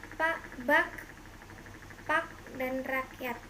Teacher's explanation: kriterianya bunyi hambat, glotal bersuara